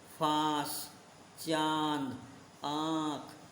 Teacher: इन स्वरों का उच्चारण मुख व नाक दोनों से किया जाता है, जैसे फांस, चांद, आँख आदि। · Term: अनुनासिक